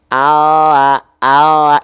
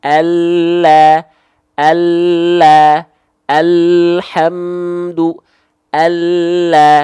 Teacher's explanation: kalau l kan ujung akhir lidahnya doang all tapi kalau huruf lam dia nampak lebih penuh nempelnya